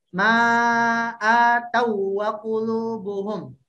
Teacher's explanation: u-nya tidak usah masuk ke gunnah, nggak usah masuk ke al-khayshum